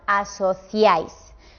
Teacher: Por ejemplo, el diptongo I, A, I. Estas tres vocales, cuando os las encontréis así, las pronunciaremos en el mismo golpe de voz. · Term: triptongo